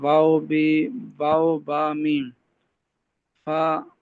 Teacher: मीम और बा, ये होंठों से अदा होते हैं